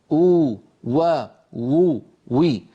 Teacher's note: مخرج الواو غير المادية بانضمام الشفتين إلى الأمام مع ارتفاع أقصى اللسان